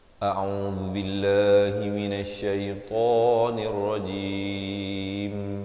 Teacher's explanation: Ain di pertengahan kerongkong dengan baris dhammah 2 harakat. Bezakan dengan baca au jadi kedua-duanya hamzah, ataupun au keduanya ain.